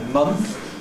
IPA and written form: mʌnθ (month)